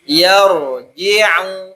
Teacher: ro yang tafkhim, yang tebal. Maka dua bibir kita agak sedikit menutup.